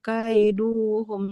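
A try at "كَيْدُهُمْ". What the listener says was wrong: Tidak kaiduhum. Dalnya doma. Huruf berharokat doma panjang kalau ada waw di depannya. Karena di depannya tidak ada waw, nggak boleh. Kaiduhum syai'a.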